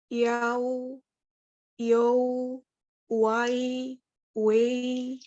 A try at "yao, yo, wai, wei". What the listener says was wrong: Iya, cuman nadanya nada satunya masih agak goyang ya. Ibu boleh ikutin saya. Yao, yo, wai, wei.